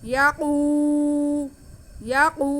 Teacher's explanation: یا پہ زبر, قاف پہ پیش اور واو ساکن, تو یہ واو مدہ ہو گیا. قاف کی آواز کو ہم کھینچیں گے اور موٹا بھی کریں گے.